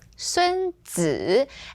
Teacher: for esteemed titles, 子 here is always the third tone